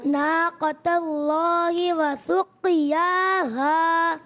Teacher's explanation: وسقیاها میں قلقلہ ادا کریں، قاف کو پر بھی رکھیں